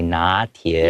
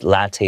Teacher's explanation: We start with an N sound, but in English, it's with an L sound. So just pay attention to that difference.